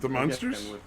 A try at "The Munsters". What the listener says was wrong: You're pronouncing it the same way. You're pronouncing monster and Munster the same way. One has an O in it and one has a U in it.